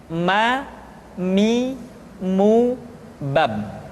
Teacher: Selanjutnya huruf ma diucapkan dengan cara merapatkan dua bibir.